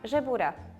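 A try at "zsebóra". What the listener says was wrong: Okay, a little bit U-like, but okay, okay.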